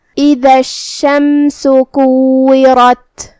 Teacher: کلمت اذا میں الف کے نیچے زیر ہے تو ہم حمزہ کو نیچے سے ادا کریں گے. حمزہ کی ادائیگی حلق کے نیچے والی حصے سے ہے. دال کو ہم زبان کے سر اور اوپر والے دانتوں کے اندرونی کناروں سے ادا کریں گے.